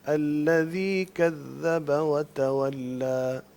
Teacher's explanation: الذي کی یا کو لمبا نہ کریں، وہاں مد نہیں ہے